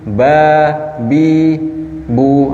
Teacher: ketika dia fathah terbuka, ba, ketika dia hamzah dia ke bawah atau meringis, bi, atau ketika dhammah dia monyong, bu